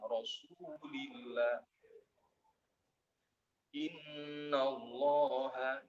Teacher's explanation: Kalau diawali dengan huruf yang berbaris doma atau fathah, contohnya Rasulillah, Innallaha, dibaca tebal.